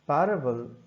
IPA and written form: ˈpær.ə.bəl (PARABLE)